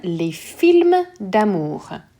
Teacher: the S is not being pronounced, and d'amour gets all kind of crunched up into one sound